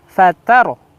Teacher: Ingat huruf ro di sini ya, kalau dia sukun, ro fatardo, lihat huruf kalimat fatardo di situ ada ro sukun yang sebelumnya ada fathah, maka dia tafhim, fatar. Nah, jadi posisi mulut kita kembali ke huruf ro itu ya, kembali ke awal seperti itu.